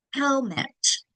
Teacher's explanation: First syllable gets the accent second syllable unacented